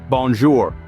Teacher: The on sound is made by vibrating the air in your nasal cavity. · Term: nasal sounds